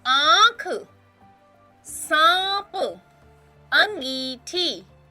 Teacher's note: अब हम आगे पढ़ने जा रहे हैं चंद्रबिंदु का प्रयोग। जब हम चंद्रबिंदु लगाते हैं तो नाक और गला दोनों से आवाज आती है।